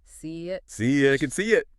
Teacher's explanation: It starts with I. We slide a little Y in there. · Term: glides